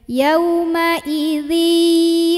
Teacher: tanwin kalau ketemu ya, maka dibacanya tanwinnya sudah lebur dengan ya. Jadi artinya dari di langsung tekan ke ya sambil nahan ya, karena ada dengung.